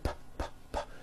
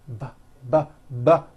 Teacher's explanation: They are produced exactly the same way here in your mouth, but the P sound has no voicing and the B sound, b, b, does have voicing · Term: paired consonants